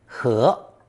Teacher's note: the pictogram of grains still on the stalk, pronounced second tone, he